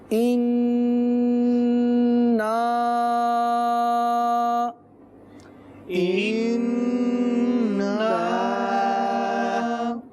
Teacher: تو اس میں مدنی چینل کے ناظرین ہمیں بالخصوص جو ہے احتیاط کرنی ہے, جب بھی سورہ کوثر پڑھیں تو ان نا میں غنہ بھی کریں اور مد بھی کریں, اور اس کے بعد جو حمزہ ہے اس کو بھی واضح کرنا ہے